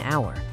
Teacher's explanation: the H is silent. The first sound you actually hear is hour, a vowel sound. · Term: silent H